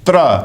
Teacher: तो त का दंत और र का मूर्धा और अ का कंठ, यह समझिए। तो त्र का उच्चारण स्थान त्रिस्थानिक है, दंत्य, मूर्धन्य, कंठ्य